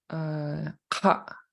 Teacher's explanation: So he does a glottal stop at the end of the vowel.